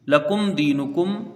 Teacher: میم ساکن کے بعد دال ہے تو یہاں اظہار شفوی ہوگا، میم ساکن کا قاعدہ، میم کو جلدی پڑھا جائے گا بغیر غنہ کے